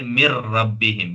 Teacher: نون کی آواز نہیں پڑھی جا رہی ہے، ٹھیک ہے، نون کی آواز کو را میں ملا کر پڑھ رہے ہیں، تو یہ بھی نون ساکن ہے۔